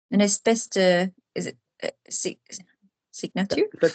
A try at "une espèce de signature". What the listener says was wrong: Yeah, une espèce de signature. Lovely. Good.